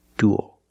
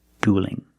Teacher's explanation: dual with a dark L and dueling with a light l because the L is between vowels